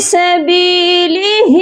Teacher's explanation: ہا کی آواز سینے والے حلق سے آئے گی